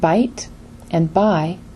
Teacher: For example, the word bite and buy are pronounced exactly the same, except for the final sound, t, which is a voiceless sound and not easy to recognize for learners.